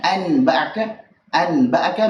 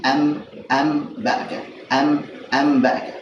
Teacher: Saat nun sukun atau tanwin ketemu dengan ba, maka diubah nun sukun atau tanwinnya dengan huruf mim. Jadi mim sukun. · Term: iqlab